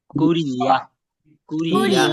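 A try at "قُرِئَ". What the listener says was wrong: একটা জিনিস আপনাদের ভুল হচ্ছে, অনেকে বলতেছে কুরিয়া, ইয়া বললে হবে না, হামজা জবর আ, শক্ত হবে, উরি আ, উরি আ, হঠাৎ করে ব্রেক, উরি আ।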